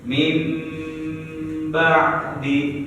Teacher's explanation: Ketika ada nun mati atau tanwin an ikun bertemu dengan ba, ya, maka bunyi nun mati diganti jadi bunyi mim, ya, artinya mengganti, ya. Cara bacanya yaitu ditahan selama 2 harokat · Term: iqlab